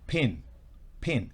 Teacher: la I tiene su sonido como en español, es decir, como I, pero corto